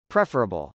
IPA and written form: prˈɛfɚəbəl (preferable)